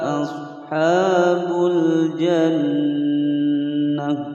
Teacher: Ashabul jannah nun bertasydid, gunnah musyaddadah ditekan ditahan selama 2 ketukan.